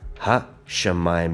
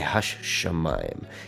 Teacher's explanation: You almost pronounce the shin twice, right?